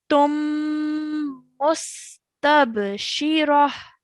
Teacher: hold the meme sound a bit longer and make more of a bouncing sound on the ba